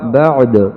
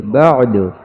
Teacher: آخر میں جو دال پہ آواز اٹھ رہی ہے وہ قلقلے کی ہے